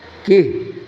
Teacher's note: Ini mad silah ketika wasol, tetapi ketika waqaf mah bukan mad silah, tidak ada panjangnya. Kih bahkan menjadi sukun.